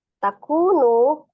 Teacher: Waw sukun sebelumnya dhamma di huruf kaf ya, ku dibaca 2 harokat. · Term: mat tabi'i waw